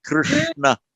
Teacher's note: you've got to bend the tongue slightly back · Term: retroflex